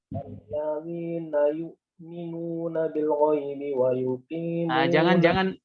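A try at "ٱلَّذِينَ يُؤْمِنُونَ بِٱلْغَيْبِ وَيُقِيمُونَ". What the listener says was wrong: Jangan ikhtilas ya, itu ikhtilas. Alladzina yu'minuna bil ghaibi. Jangan. Jadi temponya harus stabil ya. Jangan bil ghaibi, jangan bil ghaibi. Beda ya. Bil ghaibi dengan bil ghaibi. Perhatikan di situ, itu ada lin ya pada lafaz ghaibi.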